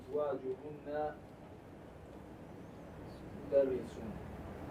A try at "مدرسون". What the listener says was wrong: Make that wow longer. And pronounce the haraka on the noon. So you're reading it correctly when you end with mudarrisun. Like if your sentence ends, and I always tell you guys this, you always end your sentence with a sukun. That's the way it works.